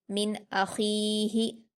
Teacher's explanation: खा पर या मद्दा है 2 हरकत खींचकर पढ़ेंगे, हा पर हरकत से जल्दी पढ़ेंगे।